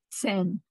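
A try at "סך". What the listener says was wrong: Not a nun, a final. Yes, final chaf. Seich. seich. Yes, you got to hear that ch.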